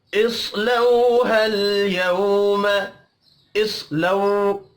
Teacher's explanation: साद हुरूफ़ मुस्तअलिया है, पुर पढ़ा जाएगा